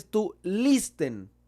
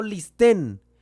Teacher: el acento no recae en la última sílaba, sino que recae en la primera sílaba